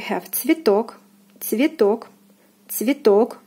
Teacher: O is stressed, is pronounced as in the alphabet.